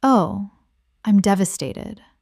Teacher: It suggests grief, collapse, ruin. The flat delivery and the mildness of the disappointment create irony that is also self-aware.